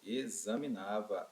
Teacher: É como se esse X tivesse um som de Z